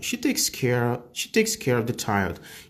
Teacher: aqui eu quase não pronuncio esse V aqui do of, porque aqui é som de V, tá?